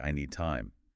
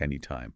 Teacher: The D in need and the T in time are similar sounds made in a similar place in the mouth. Often you only really hear one of those sounds clearly, like I need time.